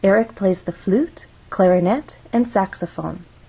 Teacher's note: until we get to the final item of the list so we're actually going to go up on flute then we'll go up again on clarinet this is our final item in the list so we're going to go down · when we have a list we use rising intonation in each phrase until we get to the final item of the list so we're actually going to go up on flute then we'll · Again, the number of syllables makes a difference in how we rise or fall. Flute has one syllable, so we only have one syllable to make our voice glide up.